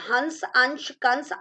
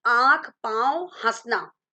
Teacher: हंस, अंश, कंस आदि का उच्चारण करते समय वायु कहां से निकल रही है, नाक से। जबकि आंख, पांव, हंसना आदि का उच्चारण करते समय वायु कहां से निकल रही है, नाक तथा मुख दोनों से निकल रही है। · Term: अनुस्वार